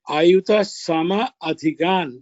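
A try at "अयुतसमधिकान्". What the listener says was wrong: it is not Sama Adhikan. It is Sam Adhikan. Sam is the Upasarga there for the word. Yes, Ayuta Samadhikan.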